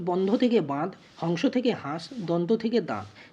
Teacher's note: ধ্বনি ক্ষীণ হতে হতে ক্রমশ লোভ পায় এবং তার রেশ স্বরূপ পূর্ববর্তী স্বরধ্বনিতে একটা অনুনাসিক অনুরন যোগ হয় · তিনটি উদাহরণই যদি আমরা খেয়াল করে দেখি, প্রত্যেকটাতে বন্ধতে ন লোপ পেয়েছে, হংসতে অনুস্বার লোপ পেয়েছে এবং দন্ততে ন লোপ পেয়েছে, দিয়ে কি করেছে, পূর্ববর্তী ধ্বনিটাকে অনুনাসিক করে দিয়েছে। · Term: নাসিকী ভবন, নাসিক্যী ভবন